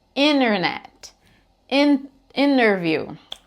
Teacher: Como o N, quando a gente vai falar o som do N apropriadamente, né, no inglês, ele fica com a língua na mesma posição do T, com exceção do que o T ele é sorzinho e o N é voz junto, eles têm mais ou menos a mesma posição da língua.